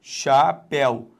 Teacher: Então a sílaba tônica é o zi. Repare, ainda que este ditongo aqui, ó, seja aberto, ele, por não estar na sílaba chamada tônica, ele não vai ser acentuado.